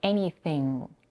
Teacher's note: the n and the g here are merged together and make one sound in the n Sound we don't produce the regular n where